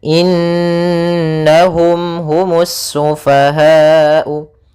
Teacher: sambil suara nunnya dimasukkan ke rongga hidung kita. Karena dia gunnah. · nunnya kita tahan dulu suara n-nya sepanjang 2 harakat, baru dimasukkan ke na. In, sambil suara nunnya dimasukkan ke rongga hidung kita.